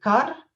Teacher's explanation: The pronunciation that I'm talking about is a tap or trill pronunciation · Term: postvocalic R